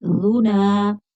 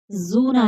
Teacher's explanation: ذال بغیر سٹی کے، زا باریک سٹی، ذال کی سٹی نہیں نکلے گی، زا کی باریک سٹی نکلے گی